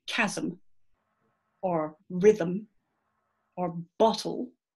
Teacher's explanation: you'll see that you have two syllables in each word and the second syllable is a consonant there's a consonant that's making that peak you could try it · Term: syllabic consonants